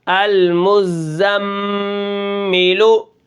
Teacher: تو یہاں پر آپ دیکھیں یہاں پر میم کے اوپر تشدید ہے، جب میم مشدد ہوتی ہے تو اس کے اندر غنہ ہوتا ہے